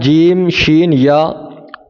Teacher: بیٹ زبان تالو سے مل کر جیم شین اور یا یعنی غیر مدہ ادا ہوتے ہیں